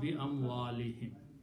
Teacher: for proper tajweed, we will also pronounce this as a kasra, him, because li, him, both are together in kasra